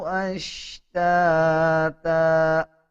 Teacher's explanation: تا کے اوپر جب وقف کریں گے تب تا کا ایک زبر سائلنٹ کر دیں گے اور ایک زبر پڑھا جائے گا. جب دو زبر کے بعد الف آ رہا ہو تب وقف کرتے ہوئے ایک زبر پڑھتے ہیں اور ایک زبر سائلنٹ کیا جاتا ہے.